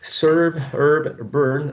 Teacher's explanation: So this vowel sound is unrounded. Okay, it's an unrounded, long, tense, mid-central vowel sound.